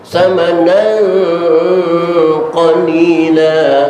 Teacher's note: Nah samanan tanwin ketemu qaf, suaranya ang. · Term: ikhfa